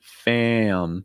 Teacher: when you have that a sound followed by a nasal, like an M or an N or an NG, it's going to break into two parts. Am. When you get to the sound, you want a heavy breath going out of your nose.